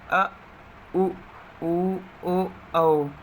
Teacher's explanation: जीभ का पश्च भाग काम करता है, उसे पश्च स्वर कहते हैं।